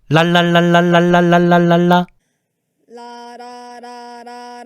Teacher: 혀가 윗잇몸에 닿는 순간 공기가 혀의 양옆으로 흘러나가고 있는 게 느껴지니? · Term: 유음